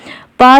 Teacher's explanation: पा जो है यह ओष्ठ तो है ही इसका उच्चारण स्थान यह अल्पप्राण भी है लेकिन यह अघोष वर्ण है